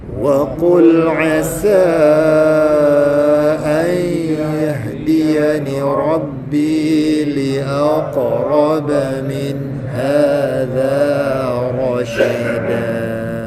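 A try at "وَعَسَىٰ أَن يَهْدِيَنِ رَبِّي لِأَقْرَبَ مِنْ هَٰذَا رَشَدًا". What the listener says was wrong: Ha jangan tak cukupkan dengunya. Yahdi cukupkan masa lama dia tuan.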